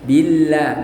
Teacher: Jadi setiap ada lam lafadz jalalah didahului kasrah, maka lam lafadz jalalah dibaca tipis atau tarqiq ya